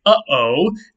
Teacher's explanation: do you feel that catch in your throat between uh and o that is a glottal stop